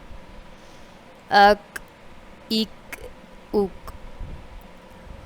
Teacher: یہ والا جو کاف ہوتا ہے نقطے کے بغیر ہوتا ہے، یہ باریک پڑھا جاتا ہے